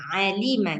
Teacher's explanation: Ainnya itu di e pangkal tenggorok ainnya itu keluar daripada tengah tenggorokan.